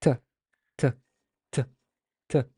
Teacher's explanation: Because basically what happens if you put your hand in front of your mouth and say t, t, t, t, you notice there's this like little burst of air that you've blocked air and then let it go and released it. So it's basically a stop. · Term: consonantal stop